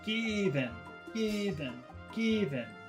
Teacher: I think normally I is a very short sound but here the accent falls on I so it becomes long so it's unnaturally long given given given so that's long short